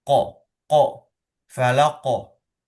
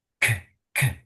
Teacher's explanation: Tempat pengucapan huruf qaf itu berbeda dengan huruf kaf yang cenderung mendesis.